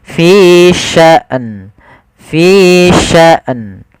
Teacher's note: Harusnya dia matikan hamzah baru matikan nun.